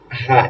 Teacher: এই হা টা হচ্ছে হলুকের মাঝখান থেকে উচ্চারিত হবে